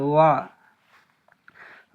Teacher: দুই ঠোঁট না মিলিয়ে মাঝখানে হতে উচ্চারিত হয়